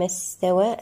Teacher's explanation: السين هنا بها صفة الرخاوة. استوى هنا الألف المقصورة من الطبيعي بمقدار حركتين في حالة الوصل والوقف.